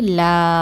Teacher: லாம் அலிப் அலி என்னது அலிப் மதான் சோ இரண்டு ஹரக்கத் நீட்டி ஓதுங்க